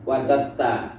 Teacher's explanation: Ini diidghamkan kepada ta. Sekalipun hurufnya tidak sama, tapi makhrajnya sama, dal sama ta itu sama.